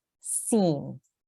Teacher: when we say Sin, your tongue is in the base of your mouth and you don't move your tongue up to the top of your mouth